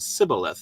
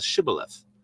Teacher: it was a trait of the tribe that they could not say the sh sound, and so they said Sibboleth instead of Shibboleth.